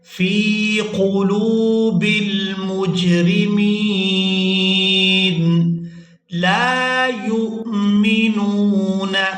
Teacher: لام کو الف مدہ کی وجہ سے کھینچ کر ادا کریں گے۔